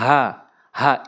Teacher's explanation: বড় হা জবর হা হলকের মাঝখান থেকে